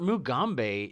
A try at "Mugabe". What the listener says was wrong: It's Mugabe. You said Mugambe. It's Mugabe. You put an M in there.